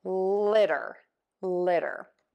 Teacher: It's that flap T that you're hearing. Most Americans will pronounce this first T as a D. So you will hear people say litter, litter.